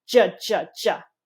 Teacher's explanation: pronounced with the lips sticking out typically and with the tongue tip touching the alveolar ridge.